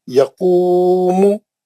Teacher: यकूमु या जल्दी पढ़ेंगे, मीम को जल्दी पढ़ेंगे, खाली खू को दो हरकत करिए।